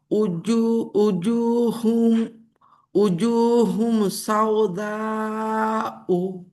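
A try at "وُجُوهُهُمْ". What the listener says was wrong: একবার হুম হবে না তো, হা 2 বার আছে। উজুহুহুম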